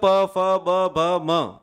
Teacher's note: इनका उच्चारण स्थान क्या हो जाएगा, औष्ठ, औष्ठ यानी होठ